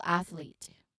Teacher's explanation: there's a slight pause or separation between the TH and the L as they fall into different syllables.